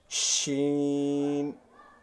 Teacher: جیم اور شین کا مخرج ایک ہی ہے، زبان درمیان میں پھیل جاتی ہے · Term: حروف شجریہ